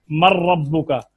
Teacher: نون کا را میں ادغام، یہ قریب المخرج ہے، مخرج قریب قریب ہے، ادغام ہو رہا ہے